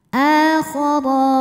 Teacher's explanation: Alif kalau ada harokatnya adalah hamzah. Akhara, huruf ra dibunyikan secara tafkhim karena ra berharokat fathah. Cara membacanya ditebalkan. Akhara. Kemudian di sini juga ada hukum madnya, yaitu mad tabi'i muqaddar sebab ra berharokat fathah berdiri.